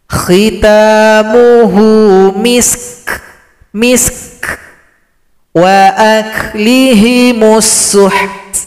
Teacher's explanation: Huruf kaf, huruf ta itu ada sifat hamas, ada bunyi nafas atau bunyi angin pada suara kita.